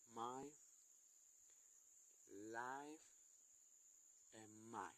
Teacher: These two vowel, but when the two vowel is together, the name is dicton. The mouth start completely open and transition quickly to the top.